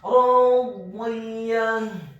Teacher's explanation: Dibaca tafkhim tebal fathah 2 harokat karena setelahnya ada alif. Kemudian huruf dha-nya dibaca tafkhim tebal kasrah 1 harokat dengan posisi bibir bawah kita agak tertutup dan posisi lidah kita di langit-langit atas. Kemudian ditarik secara tipis.